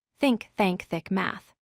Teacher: The voiceless th sound written as theta is made without vibrating your vocal cords. The air simply flows freely through your mouth. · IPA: /θ/